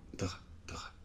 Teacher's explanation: le E final normalement on ne le prononce pas ou vraiment très légèrement, C'est perdre, [pεrdr], [dr].